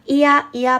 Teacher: 이야, 이야 발음했을 때 어떠한 공기의 흐름도 방해받지 않았어요. 그렇기 때문에 반모음의 성질을 갖고 있는데요.